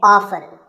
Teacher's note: this as often now strictly speaking often is not wrong but the more common pronunciation is with the t silent